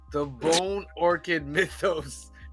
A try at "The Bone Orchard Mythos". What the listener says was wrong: You said it right. Orchard. Not orchid. Orchid's a flower. Orchard is a place with trees.